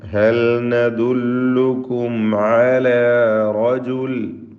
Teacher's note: وقال الذين كفروا هل ندلكم على, هل ندلكم സാക്കിന ലാമിനെ ഇൽഹാർ ചെയ്യണം. നദുല്ലുക്കും സാക്കിന മീം ഇൽഹാർ ഷഫവി നൽകി മണിക്കാതെ വെളിവാക്കണം